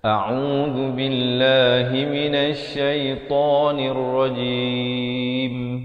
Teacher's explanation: hamzah baris atas a, makhrajnya di pangkal kerongkong, ain di pertengahan kerongkong